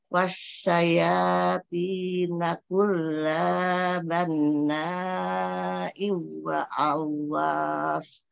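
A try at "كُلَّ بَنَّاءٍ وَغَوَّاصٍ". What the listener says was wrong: Wa gawash. Umi, kulla pendek Umi. Jangan diayun. Kulla banna'in wagwas.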